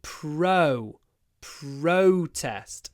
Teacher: is protest as a noun many people attended the protest so the stress is on the first syllable